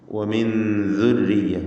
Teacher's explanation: സാക്കിനത്ത നൂൻ ശേഷം ദാൽ ഇഖ്ഫാ ഹഖീഖി നൽകി മറച്ചു മണിക്കുക